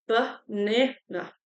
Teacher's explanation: Às vezes as vogais têm esse som do schwa, que é esse A. Por exemplo, aqui a palavra que no português é banana, no inglês fica banana.